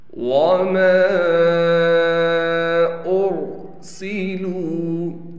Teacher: حمزہ کو را سے ملائیں گے، را کو موٹا پڑھیں گے، سین میں سیٹی نکال کر پڑھیں گے. لام کے بعد واو ہونے کی وجہ سے لام کو ایک الف کی مقدار کھینچیں گے.